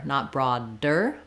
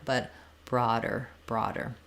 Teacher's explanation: is flapped so the D lifts up the voice is on it's just like a regular D I just don't need a strong burst of air